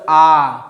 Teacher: आ को बोलने में आपका मुंह क्या है? पूरा खुल रहा है। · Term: विवृत स्वर